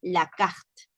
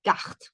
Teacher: Es una E prohibida. Es una E que no se debe de pronunciar porque dice carte. No dice la carte.